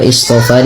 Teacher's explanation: shadnya ya ditebalkan sedikit sehingga membedakan antara huruf shad dengan huruf sin